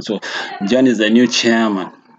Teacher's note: the tone of voice fall down, especially on the last word, chairman